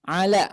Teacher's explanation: lam ini sifatnya tipis bu ya maka bunyinya ke huruf vokal a ketika berharakat Fatah